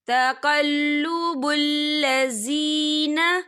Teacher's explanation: یا ساکن ہے، یا ساکن سے پہلے زیر ہے، تو ہم اسے 2 یا 3 حرکت کے برابر کھینچ کے پڑھیں گے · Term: مدہ